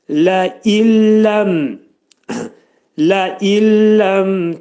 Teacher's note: Nun hərfi yetişir ləmə və idğam bilağunna olacaq. Yəni nun hərfi ləmə çevriləcək və ağız boşluğunda deyiləcək.